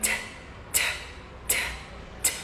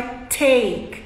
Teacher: É com a língua na ponta aqui atrás dos dentes da frente e soprando um pouco. Então é t. Repete aí. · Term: letra T